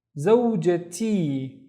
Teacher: So we initially had a ta marbuta here for zawja, but then since we're adding the E to make it my, the ta marbuta turns into a regular T